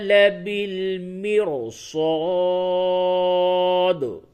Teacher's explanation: را ساکن سے قبل زیر ہے، اس را کو تو زیر کی وجہ سے باریک پڑھنی چاہیے تھا، لیکن یہاں پہ را باریک نہیں ہوگی